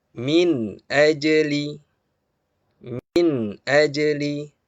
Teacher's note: Yaitu apabila nun sukun atau tanwin bertemu dengan salah satu dari 6 huruf al-halqu atau halqi. Maka bunyi nun sukun atau tanwin harus dibaca dengan jelas. Ya, dengan jelas tanpa gunah. Jangan didengung. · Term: izhar